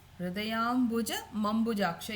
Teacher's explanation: Im and a will become ma, right? So it is becoming hridayambuja mambujaksha.